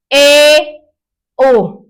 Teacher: आधा बंद करते हैं तो हमारा मुंह आधा बंद है और थोड़ा सा खुला · जिन स्वरों का उच्चारण करते समय मुख आधा बंद रहता है उन्हें क्या कहा जाता है, अर्ध संवृत कहा जाता है। आधा बंद रहेगा, थोड़ा सा खुला, मतलब इनकी संख्या जो होती है 3 होती है।